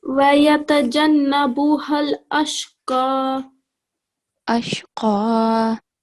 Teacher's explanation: This letter qaf, it has to be thick.